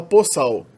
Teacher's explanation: Outro fenômeno morfofonológico interessante do servo-croata é a alternação entre o O e o L. Quando o L fica no final da palavra, ele acabou virando na ortografia um O. E na fonética uma espécie de W, né? Uma espécie de semivogal.